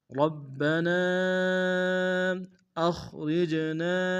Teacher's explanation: الف مدہ کے اوپر مدہ منفصل ہے، کم سے کم 3 الف میں کھینچیں گے